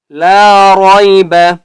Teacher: کتاب لا ریب، لام کے آگے الف ہے، اس لیے ہم نے لام کو بھی 1 الف کی مقدار کھینچ کر پڑھنا ہے۔ را کے اوپر زبر ہے، اس لیے ہم نے را کو پر کر کے پڑھنا ہے